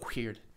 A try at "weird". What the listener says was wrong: There's no H in weird.